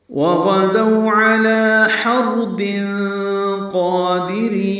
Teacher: واو ہونٹوں کی نا تمام گلائی سے ادا ہوگی